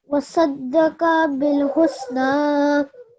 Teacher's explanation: So when you're pausing over here, we're applying the rule of pausing at a vertical fathah, which is that there's no change that takes place. So still a 2-second elongation takes place.